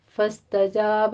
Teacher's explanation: فاستجاب میں سین کے اوپر سیٹی کی آواز آئے گی